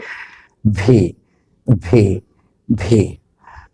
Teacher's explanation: দু ঠোঁট এক না, উপরের দাঁত আর নিচের ঠোঁট কামড়ে ধরতে হয়, তারপরে বলতে হবে ভি, ভি, ভি।